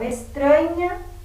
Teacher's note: é uma paroxítona então todas essas palavras são paroxítonas por quê Porque a sílaba mais forte é a penúltima